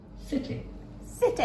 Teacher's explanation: we squash that sound at the end it's a short I